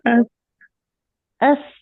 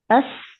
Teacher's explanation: जो नीचे वाले दो दांत हैं उस पे आपकी जबान की टिप लगी है दरमियान में, सही। और इससे अदा हुआ है सीन, अस।